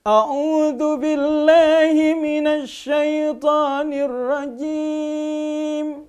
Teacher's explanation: Nadanya pertama tinggi, ya, naik dulu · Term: nada yang pertama naik